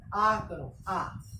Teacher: आ के दौरान क्या होता है, मुख पूरा खुलता है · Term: विवृत स्वर